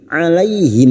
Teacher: 'Alaihim fathah bertemu ya sukun kita lunakkan huruf lin. 'Alaihim mim sukun bertemu ha, mim sukun dibaca jelas tanpa mendengung. Mim sukun mendengung hanya bertemu dengan 2 huruf, yaitu huruf ba dan huruf mim. · Naka 'alaihim, huruf ain lagi wastul halqi, yaitu tengah tenggorokan. 'Alaihim fathah bertemu ya sukun kita lunakkan huruf lin. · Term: idhar syafawi